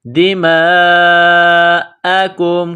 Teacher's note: کاف کو میم کے ساتھ ملانا ہے، کاف کو باریک کرنا ہے